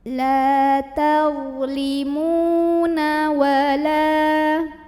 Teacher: huruf mim yang baris dhammah kita panjangkan 2 harokat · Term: mad tabi'i